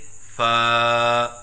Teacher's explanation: پڑھنے کا طریقہ: فا کی ادائیگی کے وقت اوپر والے دو دانتوں کے کناروں کو نچلے ہونٹ کے اندرونی حصے سے لگائیں اور اس کے بعد پھر زبان کو الگ کریں اور منہ کھولیں، کیونکہ الف کی ادائیگی منہ کے کھولنے سے ہوتی ہے، اور ایک الف کے برابر لمبا کر کے پڑھیں۔ جیسے فا، نہ ایک الف سے کم ہو جیسے فا، اور نہ ایک الف سے زیادہ ہو جیسے فا۔